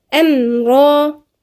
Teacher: في النفس بقى ما هياش همس، هي مش همس، ما فيهاش جريان نفس، فيها انحباس نفس اللي هو الجهر، عكس الهمس الجهر. الميم في الجهر وموجودة في التوسط، لا هي رخوة ولا فيها شدة، هي ايه متوسطة، الصوت طالع وسط، لا في جريان صوت ولا في انحباس صوت.